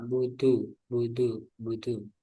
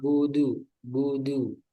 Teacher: Iya karena butuh butuh butuh sedikit ada udara. Nah, nanti dilatih tidak ada udara ya, karena dia bukan hamas tapi jahar.